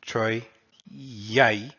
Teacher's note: an I, when it's in between, when it's near a vowel, becomes elongated and is pronounced like a semiconsonant. So this would be considered a consonant for the purposes of scanning poetry.